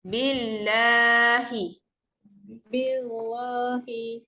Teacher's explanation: bil tu nipis. La tu panjangkan sedikit sebab dia ada huruf mat dekat situ.